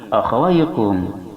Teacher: Kaf ini makharijul hurufnya berada di pangkal lisan setelah qaf.